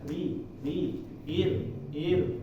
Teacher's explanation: kalau ri ini karena dia bukan tafkhim, yaitu tarqiq, nyantai lidahnya, dia begitu dari belakangnya nggak ada pengaruh tebalnya, langsung aja ke atas ya.